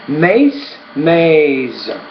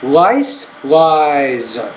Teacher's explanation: So lies, because it ends in the S after, it actually sounds more like a Z.